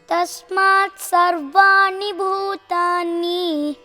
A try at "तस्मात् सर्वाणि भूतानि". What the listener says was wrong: Ni is not separate. Bhutani